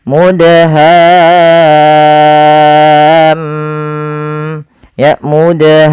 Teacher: huruf mim berharakat tasydid maka di sini mimnya ada bacaan gunahnya maka suara mimnya kita tahan ya teman-teman kita tahan sepanjang berapa harakat sepanjang dua harakat maka setelah kita panjangkan enam hanya masukkan mim sambil ditahan mnya